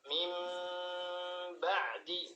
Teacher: Itbaq itu ketika kita baca mim ba'di itu dirapatkan mim bibirnya rapat.